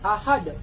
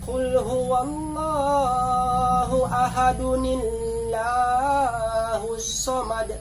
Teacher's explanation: Ketika akan dihubungkan, atau wasl, nun harus diucapkan.